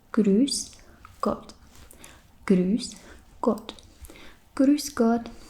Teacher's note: it's basically E, but with the shape of your mouth that looks like ooh, like if you were trying to say ooh, but instead you say E